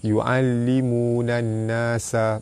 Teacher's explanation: Alif lam bertemu dengan nun, alif lam syamsiah, cara baca dia terus masuk ke nun.